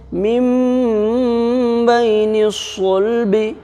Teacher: اقلاب ہوگا، اس لیے کہ نون ساکن کے بعد با ہے، اس لیے نون ساکن کو میم سے بدل کر کے گنہ کے ساتھ پڑھیں گے